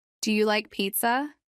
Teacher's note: a few common intonation patterns Rising intonation for yes no questions when asking yes no questions your pitch Rises at the end